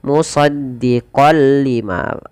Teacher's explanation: Awalnya dibaca musaddiqan lima karena bertemu lam, masuk tanwinnya kepada lam, nunnya hilang. Musaddiqal lima tanpa ditahan. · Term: idgham bila gunnah